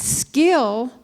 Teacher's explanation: not articulated with the same push of breath as it is in the word keep because it's the second sound in a blend